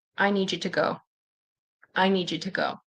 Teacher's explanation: So, the D and the Y can turn into J. · I need you to turns into ta